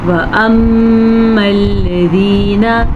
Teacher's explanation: میم کا غنہ ادا کر لیجیے گا میم پہ شد کی وجہ سے